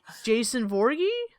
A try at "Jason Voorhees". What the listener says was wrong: There's no G.